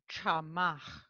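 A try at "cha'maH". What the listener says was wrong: I didn't hear the kahwit.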